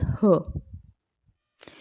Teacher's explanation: श्वास वायु तीव्र वेग से स्वर यंत्र मुख पर संघर्ष उत्पन्न करती है, तो स्वर यंत्रमुखी कहते हैं, स्वर यंत्रमुखी।